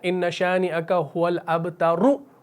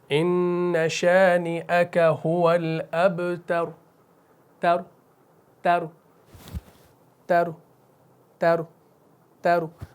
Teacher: तो पेश का तिहाई हिस्सा अदा करना है, ये होता है वक्फ़ बिर रौम।